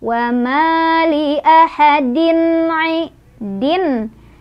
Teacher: Wama li ahadin din idhar karena ada tanwin kasrah ketemu dengan huruf halki yaitu ain jadi idhar halki ini dibacanya tanwinnya jelas